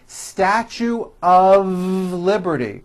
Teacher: mistake even though the word of is spelled with an F we pronounce the word of with a voiced V